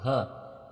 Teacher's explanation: घ घोष तथा महाप्राण है